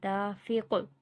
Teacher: قوف پہ بھی قلقلہ ہوگا. مطلب جھٹکا جیسے آواز دوبارہ آتی ہے ایسے ہوگا.